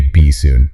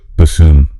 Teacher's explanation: the stress is on that second syllable, and the double O makes a long U sound. So it's bassoon.